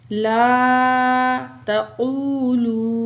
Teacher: तो ये अलिफ खाली है, पहले अल्फाज पर ज़बर है, अलिफ मद है, यहाँ भी 2 काउंट खींचेंगे। ला तक़ूलू क़ाफ को मोटा पढ़ेंगे, ता बारीक पढ़ेंगे, वाओ साकिन मा कबल पेश वाओ मद 2 काउंट खींचेंगे।